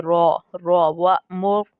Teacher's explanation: रॉ को पुर करके यानी कि मुंह को भर के पढ़ना है